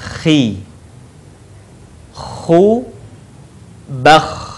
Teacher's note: Huruf ini dikeluarkan dari tenggorokan yang terdekat dengan rongga mulut kita. Ciri khasnya terdengar suara seperti orang yang sedang mendengkur. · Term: huruf kha